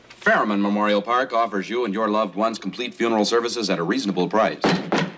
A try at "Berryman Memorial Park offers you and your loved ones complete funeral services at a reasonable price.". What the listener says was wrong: Put more emphasis on Berryman.